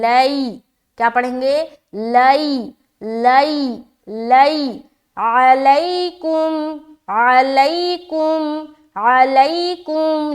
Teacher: ہے تو یہ یا لین ہو گیا، اب یہاں پر ہمیں نرمی کے ساتھ جلد ادا کرنا ہے، اور اس بات کا بھی خیال رکھنا ہے کہ آواز بھی معروف ہو، مجہول نہ ہونے پائے